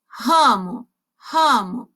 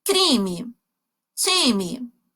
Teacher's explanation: esse som mais nasalado indica que a minha vogal é nasal